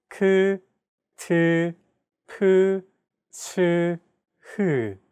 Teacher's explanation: Aspirated consonant sounds, on the other hand, have an added turbulent sound.